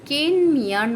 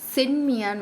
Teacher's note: அந்த மீ -ல உள்ள ஈ தான் இந்த இடத்துல குறைந்து ஒலிக்குது அந்த ஈ ங்குறது ஒரு மாதிரி அளவிலிருந்தும் அரை மாதிரி அளவா ஒலிக்குதாம் குற்றியல்